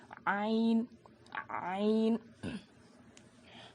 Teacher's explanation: حلق کے بیچ کے حصے سے عین ادا ہوتا ہے